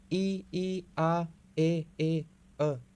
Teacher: अव्रत मुखी में होठों की जो आकृति है वो गोल नहीं होती